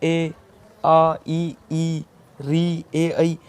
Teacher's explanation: अवृत्ताकार स्वर वे स्वर जिनके उच्चारण में होठों की आकृति वृत्त के समान गोल ना होकर फैले रहते हैं, मतलब ये गोल नहीं होते, फैल जाते हैं, अवृत्ताकार स्वर कहलाते हैं।